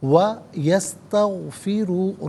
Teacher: را پر پیش ہے، را کو پر کر کے پڑھیں گے